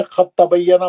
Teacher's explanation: خط تبینا لکھتے ہیں لیکن پڑھنے میں خط تبینا پڑھا جاتا ہے. اس مثال میں دال ساکن کی آواز تا ساکن سے بدل گئی اور پھر تا ساکن تا مشدد متحرک میں داخل ہو گئی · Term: ادغام